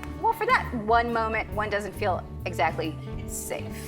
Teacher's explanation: Moment ends in a T, and the following word is a content word, so they don't link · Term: glottal T